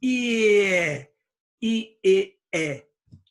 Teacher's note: Now remember, for the I, remember how to say that. There's E with the tongue high. E, and then tongue a little farther down.